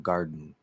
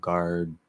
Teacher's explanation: You're holding that position. You're not releasing the D. And so it does kind of stop for a second, and then the N gets pushed out. So that opens up and it creates a little plosive, like an explosive type sound. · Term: nasal plosive